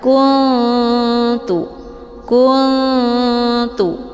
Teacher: saling berdekatan Nun posisinya ujung Lijah ta juga posisinya ujung lidah maka cara bacanya nunnya juga disamarkan dulu kemudian siap-siap menuju ke huruf ta